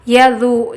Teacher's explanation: جب ذو کو پڑھیں گے زبان کی نوک تھوڑی سی باہر نکلے گی، سیٹی والی آواز نہیں آنا